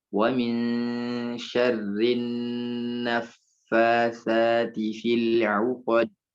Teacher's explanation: Nunnya tasydid, jadi ditahan.